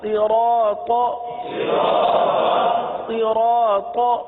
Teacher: حروف صاد کو ہم نے ہمیشہ پر پڑھا ہے، کیونکہ حروف مستعلیہ میں سے اس کو ہمیشہ ہم نے پر پڑھا ہے، تو یہاں پر بھی پر پڑھیں گے۔